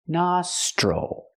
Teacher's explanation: The O makes the open ah sound, like hot and stop, nostril.